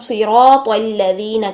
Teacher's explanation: یہ والا جو لام ہے اس کو موٹا نہیں کرنا، الذین نہیں کرنا، صراط تو موٹا ہے لیکن لام کو فوراً باریک کریں گے